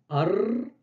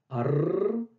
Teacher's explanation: Ar, avec le R roulé